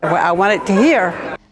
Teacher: the second feature here is a glottal replacement of final consonants you can hear the glottal stop instead of a t